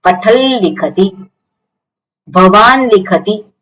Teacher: તથદ ધન અનુનાસિક ન છે એટલા માટે અનુનાસિક લ થઈ જશે ન કેવો છે અનુનાસિક છે એટલા માટે અહિયા અનુનાસિક લકાર થઈ જશે